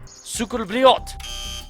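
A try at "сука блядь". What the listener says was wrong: It's not блядь with a T, it's блядь with a D.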